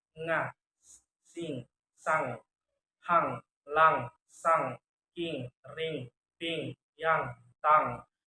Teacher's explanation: Voice velar nasal sound nga, sing, sang